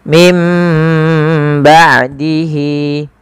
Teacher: agar dibaca dengan huruf mim. Mim ba sambil ditahan sepanjang dua harakat baru dilepaskan. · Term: iqlab